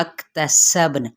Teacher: काफ पे हम्स करेंगे और बा पे कलकला करेंगे